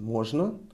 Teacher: We emphasize on о. We raise our intonation.